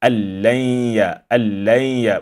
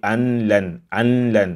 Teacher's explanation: And the symbol of emphasis you see here on the lam indicates that this noon is merged in the lam, and therefore the silent noon here becomes like inexistent.